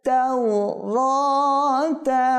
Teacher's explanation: র এটা পুর হবে, কাটা হারকত, কাটা জবর, এই জন্য পুর হবে